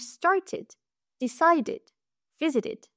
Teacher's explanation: Après le T et le D, il se prononce id.